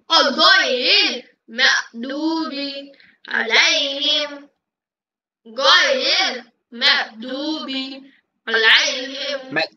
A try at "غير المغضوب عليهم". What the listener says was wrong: এরকম কেন হয় ম্যাগ গয়নের উচ্চারণ হয় না কেন মাগদুবি মাগদুবি মাগদুবি মিম জবর গইন জেদ মাগ, মিম জবর গইন জেদ মাগ, মাগ, মাগদুবি।